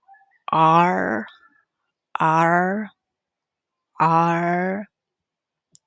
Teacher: The point of articulation is post-alveolar. It's approximate as a manner of articulation.